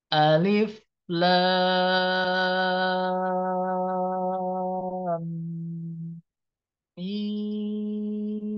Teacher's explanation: lamnya ditandai dengan tanda Alif panjangnya 6 harakat ya diikuti dengan suara gunah karena bertemu dengan mim tasdid